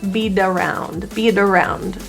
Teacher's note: The T in beat is surrounded by vowels, so that's pronounced as a flap T.